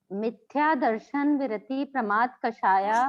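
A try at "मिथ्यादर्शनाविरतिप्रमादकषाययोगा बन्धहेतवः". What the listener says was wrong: दर्शन विरति नहीं है, मिथ्या दर्शन अविरति।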